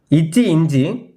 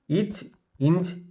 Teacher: நாவின் இடை நடு அன்னத்தின் இடைப்பகுதியை பொருந்துவதால் பிறக்கும் மெய்யெழுத்துக்கள்